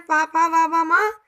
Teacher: पा वर्ग के जितने वर्ण हैं पा पा वा वा मा सब होठों को छूते हुए बाहर निकलते हैं, इसलिए इसको ओष्ठ्य वर्ण कहा गया।